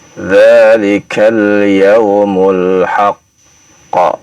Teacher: pantulan itu ketika memantul adalah dengan ya bunyi pantulan bukan fathah ya, dan juga bukan kasrah, apalagi dhammah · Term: Pantulan qalqalah